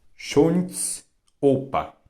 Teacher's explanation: O zamkły, czyli kaszubskie zamknięte, to dźwięk pomiędzy o a u. Ułóż usta jak do polskiego u, postaraj się wymówić o.